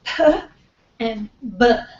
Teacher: up in the front these are what we call bilabial because you have two lips and the two lips are touching that's the place of articulation